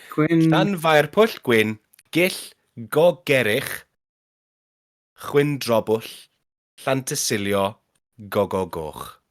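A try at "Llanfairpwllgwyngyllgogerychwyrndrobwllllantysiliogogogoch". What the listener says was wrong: You don't pronounce the W there.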